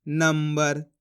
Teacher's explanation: अब अपन ने यहाँ पे भी आधा माँ का उच्चारण करा इस प्रकार से नंबर।